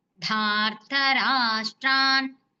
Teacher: దాకి దీర్ఘంతో పాటు అది మహాప్రాణాక్షరం కాబట్టి శ్రసిస్తూ పలకండి. రాకి తాగుతూ ధార్త రాష్ట్ర, రాకి షాకి రెండిటికి దీర్ఘాలు ఉన్నాయండి.